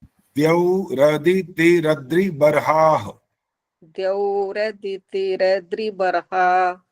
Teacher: अंत में ह की आवाज चाहिए, विसर्ग है वह